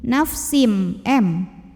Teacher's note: karena tanwin kasroh ketemu dengan huruf mim maka tanwin kasroh lebur ke mim nafsin m disertai dengung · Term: idgham bighunnah Kamil